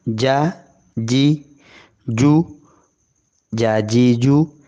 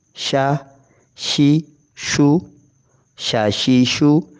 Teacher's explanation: تینوں کا ایک ہی مخرج زبان کا درمیان تالو کے ساتھ لگتا ہے